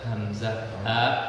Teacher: Hamzah ha itu keluarnya di bawah, di tenggorokan atau di bawah jakun.